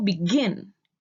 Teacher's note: So for example, begin. The stress is in gin. So we double the n and write beginning.